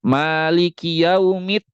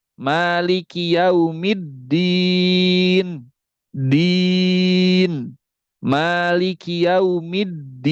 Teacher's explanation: Pertama, dal itu memiliki sifat syiddah. Yang kedua, di sini dalnya dia bertasydid.